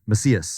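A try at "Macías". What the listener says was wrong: I think we're missing an emphasis.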